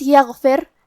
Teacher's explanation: حرف الغین کی ادائیگی حلق کے اوپر والے حصے سے ہے